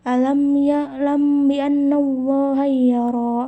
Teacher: Nah, cara membacanya itu harus samar-samar, artinya pada saat membaca mim sukun disamarkan dan terdengar seperti didengungkan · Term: ikhfa